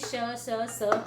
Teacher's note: इन व्यंजनों को उच्चारण करते समय वायु तेज गति से मुंह से रगड़कर निकलती है, यानी उसमें ऊष्म यानी गर्मी पैदा करती है। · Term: ऊष्म व्यंजन